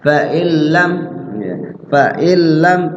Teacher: Artinya nunnya diidghamkan ke lam, dimasukkan ke lam, ya. Nunnya nggak dibaca, langsung lam yang dibaca. Nah, di lamnya itu bila gunnah. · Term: Idgham bila gunnah